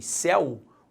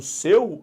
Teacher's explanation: Repare que em céu, o el é aberto. E quando eu falo seu, ao contrário, o el é fechado.